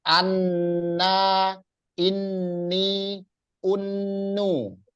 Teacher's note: Kalau nun pakai tasdid itu ditahan. Namanya namanya gunnah, dengung ya. Dengung ya.